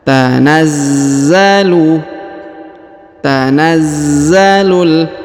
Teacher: huruf Za berharakat tasdid maka kita tahan dan kita tekan